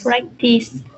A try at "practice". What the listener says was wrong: Again, make sure you're using the ending sound here, okay? Anytime you see CE, it's going to be the S sound. Practice, practice.